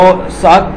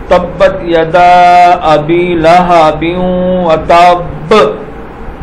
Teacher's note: تو یہ الفاظ جب ساکن ہوں گے تو ان کو تھوڑا سا ایسے ہلا کے پڑھنا ہے، جیسے تبت یدا ابی لہب وتب۔ اب با کو جب ساکن کریں گے ایسا محسوس ہے جیسے اس کو ہم نے ہلایا ہے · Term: قلقلہ